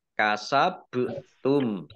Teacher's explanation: ba sukun bacaan kolkolah dibaca memantul